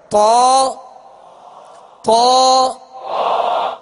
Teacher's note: جیسے بعض لوگ پڑھتے اعوذ باللہ من الشیطان، تو توا ناک میں آواز چلی گئی. یہ توا نہیں اور نہ ہی توا، بلکہ تا، منہ کھول کر اس کو پر کرنا ہے